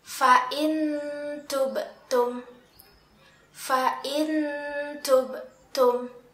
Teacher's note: Nah, di sini ada nun sukun yang bertemu dengan huruf ta. Kita membacanya dengan nun sukun itu masih terdengar suaranya, tetapi disertai dengan samaran makhraj huruf ta. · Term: ikhfa hakiki